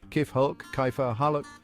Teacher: The K sound in Arabic is pronounced further back in the throat than in English.